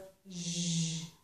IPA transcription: ʒ